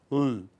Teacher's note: all speech air escapes along the sides of the tongue. Okay, and you get the sound L.